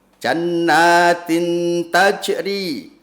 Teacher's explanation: ta kasrah tanwin bertemu dengan ta fathah, maka bacaannya namanya ikhfa hakiki, kudu dengung.